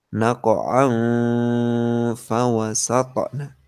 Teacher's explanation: Tanwinnya disamarkan baru fa dibaca.